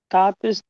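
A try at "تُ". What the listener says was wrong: তা পেশ আপনি বলছেন তু তাহলে পড়ার সময় তা বলছেন কেন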